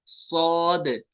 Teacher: सौद में सीटी भी होगी और ये पुर भी होगा